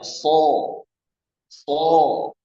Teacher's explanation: Itbaq terkumpul suaranya di dalam mulut ya.